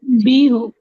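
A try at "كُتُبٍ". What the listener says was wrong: बी क्यों होगा? आपने हल्का करना है उसको। कुतुबिन हो जाएगा, ठीक है।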